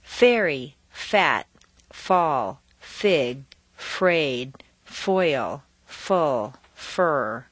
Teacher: problems to Japanese who say an H sound to pronounce f the lower lip raises up and the inside of the lip very lightly touches the outside of the upper teeth and you make a slight hissing sound